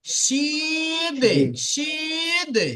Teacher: দালের উপর সাকিন হবে তো দালকে কলকলা করতে হবে।